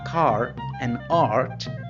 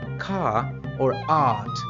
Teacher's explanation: Irish people pronounce the R between vowels before a consonant and at the end of a word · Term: rhotic pronunciation